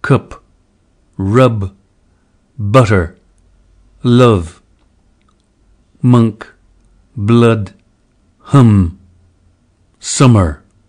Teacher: Crystal suggests that the close mid-back unrounded vowel U captures the likely quality of this vowel. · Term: strut lexical set